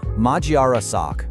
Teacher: It's full of what we call back vowels. Sounds like ah and o that you make in the back of your mouth.